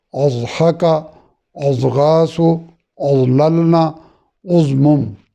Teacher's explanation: زواد کا عرض کیا کہ یہ خوب موٹا اور چونکہ مخرج اس کا لمبا ہے تو کسی قدر طوالت سے یعنی ادا کرتے ہوئے وقت لیتا ہے